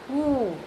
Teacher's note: Here it is a rounded, back rounded long vowel.